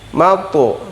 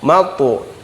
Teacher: bukan u bukan o bunyinya, tapi mato antara u dan o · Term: qalqalah